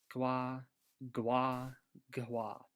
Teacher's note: labialized basically just means with a W sound right after it